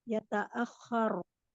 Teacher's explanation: Ra dibaca sukun dengan tafkhim